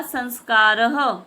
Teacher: संस्कारः में लगता है विसर्ग, उसी प्रकार हम उसका उच्चारण ह में करते हैं